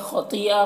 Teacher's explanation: خا اور طا دونوں کو پر پڑھنا ہے کیونکہ حروف مستعلیہ میں سے ہے